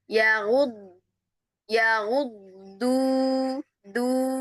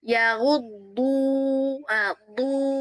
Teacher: Huruf dot itu dari awal sampai akhir dia selalu itbaq. Selalu itbaq ya.